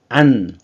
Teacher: 안 발음하면 혀끝이 잇몸에 붙죠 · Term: 니은